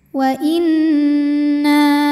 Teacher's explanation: Cara bacanya dengung, bunyi n tahan sampai ada suara masuk hidung. Wa inna. Na mad tabi'i zahiri karena ada alif didahului baris fathah, maka huruf nun panjang 2 harokat. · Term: gunnah musyaddadah